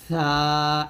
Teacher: হামস মানে বাতাস চালু থাকবে অর্থাৎ সা যখন আপনি উচ্চারণ করবেন বাতাসটা চালু রাখবেন